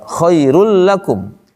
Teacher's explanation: Ghunah dengung berarti tidak ada dengung di situ. Berarti tidak masuk ke hidung berarti tidak ditahan. Jelas dibacanya. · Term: bila ghunna, idgham bila gunnah